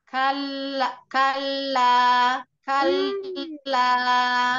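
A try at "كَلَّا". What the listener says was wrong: Kalaupun ada gerakan itu gerakan kecil. Nah, kalau ibu tadi gerakannya terlalu banyak. rahang. Padahal itu maksudnya kan ada di lisan. tipsnya jangan terlalu. Kalau makhrajnya sudah sampai oleh lisan, maka rahang tidak perlu ikut mengantarkan.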